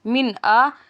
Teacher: اب ہم نے پڑھنا کہ ہم نے اس پہ اظہار ہے، کیونکہ نون ساکن کے بعد حمزہ آ گیا تو ہم نے غنہ نہیں کرنا